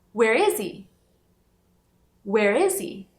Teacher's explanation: no caso do H, mesmo se ele começa a palavra, às vezes ele está reduzido ou ele some. Por exemplo, nessa frase, a gente tem Where is he? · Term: fala conectada